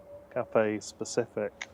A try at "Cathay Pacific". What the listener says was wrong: Sounds like you're saying the cafe. Got cafe, yeah?